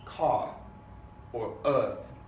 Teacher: if the R is not in one of the initial positions at the beginning of the word then the R sound drops it almost disappears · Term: non-rhotic